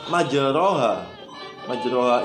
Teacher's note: bacaan imalah itu bunyi antara harokat fathah dan kasrah